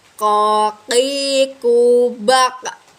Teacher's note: menyentuh pangkal lisan dengan langit-langit bagian belakang